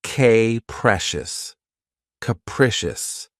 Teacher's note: This word has 3 syllables, and the stress is on the second syllable. Keep in mind that the first syllable has that schwa sound.